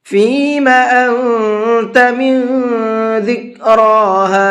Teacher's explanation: انت نون ساکن کے بعد میں تا ہے تو یہاں بھی نون کے اندر اخفا کریں گے